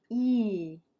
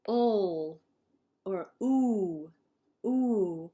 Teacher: we have some vowels, our tongue goes more forward, like E. And some of our vowels, the tongue will go back, like ol or oo, ooh. So we say there's front vowels, E, and back vowels, ooh.